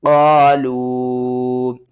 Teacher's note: چھوٹی مد ہے، 3 الف کے برابر کھینچ کر پڑھیں گے